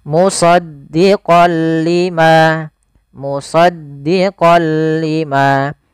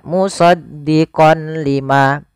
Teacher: lam awalnya kalau kita baca musaddiqon karena bertemu dengan huruf lam tanwinnya masuk ke huruf lam suara n-nya dihilangkan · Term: Idgham bila gunah